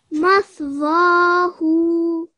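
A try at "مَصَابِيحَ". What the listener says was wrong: Very nice. You did your elongation really nicely in both of those.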